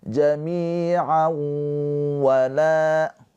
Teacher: tanwinnya ini dileburkan ke huruf waw, ditahan 2 harokat sambil dengung. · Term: idgham bi gunnah